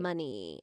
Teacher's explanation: I always get a little vocal fry at the very end